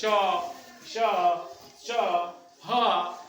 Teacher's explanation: तो जब हम ये उच्चारण कर रहे होते हैं तो हवा घर्षण करते हुए हमारे मुंह से बाहर निकलती है। इसीलिए हम इसको उष्म या संघर्षी व्यंजन के नाम से जानते हैं।